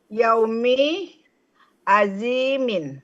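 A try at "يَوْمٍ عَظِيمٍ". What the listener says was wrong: itu yaumi kan, bukan yaumin ya Bu ya. yaumin. Soalnya hilang di sini.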